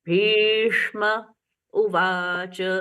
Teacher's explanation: बस हमारी tip of the tongue ऊपर की तरफ मूर्धा की तरफ जाती है। हम श बोलते हैं।